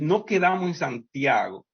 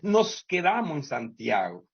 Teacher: en el español dominicano hay un desgaste de la S, tanto fonética como morfológica, o sea, la que tiene marca como plural, segunda persona, etc.